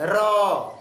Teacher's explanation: मुख से जब र का उच्चारण किया जाता है, र, तो देखिएगा उसमें कंपन होता है। क्या होता है? कंपन होता है। तो ऐसे वर्ण को प्रकंपित या लुंठित बोलते हैं।